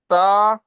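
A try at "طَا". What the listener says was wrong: তা খারা যাবার তা টানবেন তো।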